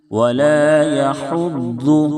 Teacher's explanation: بڑی ہا ہے، درمیانی حلق سے ادا کریں، بالکل صاف ادا کریں گے. ضاد پڑھتے ہوئے زا کی آواز نہ نکلے، اس کا خیال رکھیں.